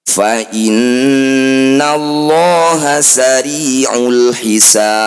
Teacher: Qalqalah artinya memantul, kubro itu besar. Pantulan huruf ba benar-benar dinampakkan. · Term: qalqalah kubro